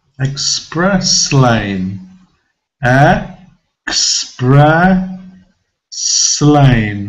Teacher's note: they're going together i'm not pronouncing express lane express lane but they join together they're joined together with the s so i'm moving forward as and joining it to the beginning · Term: connected speech